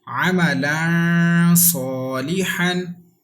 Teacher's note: there is ikhfa letter after tanween. That's why there is ikhfa and with gunna, and this alif is alif madda, so it will be stretched equal to 1 second. Ain zabar a, mim zabar ma, ama, lam tu zabar lan, amalan, صاد alif zabar so, lam zirli, صالي, ha tu zabar han, صالحا.